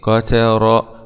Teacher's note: راء فتحه مع تفخيم